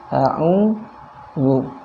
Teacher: ketika harokatnya dhammah, maka bibir kita membentuk bulatan atau monyong ke depan ya.